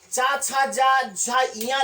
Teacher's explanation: ये स्पर्शी तो है ही है, साथ में संघर्ष भी होता है, तो इस पूरी लाइन को स्पर्श संघर्षी भी कहते हैं।